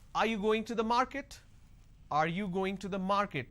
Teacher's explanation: So when I say, are you going to the market, there is a rising tone.